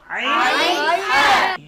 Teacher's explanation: কন্ঠনালীর মধ্যখান থেকে মধ্যখান থেকে দুটি হরফ উচ্চারিত হয় আইন হা